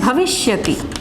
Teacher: यहाँ पे दंत सा को मूर्धन्य शा हो जाता है